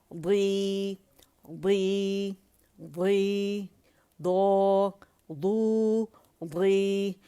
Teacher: اسے دوی دوی اور سوئی سوئی نہیں کریں گے, ہونٹ اس میں استعمال نہیں ہوں گے